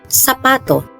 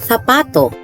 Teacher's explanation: In Latin America, the letter Z and the letter combinations CE and CI are pronounced with an S sound, while in northern and central Spain, this is pronounced with Th sound.